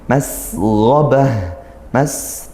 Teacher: mas didesiskan ngalir suaranya, desis nafasnya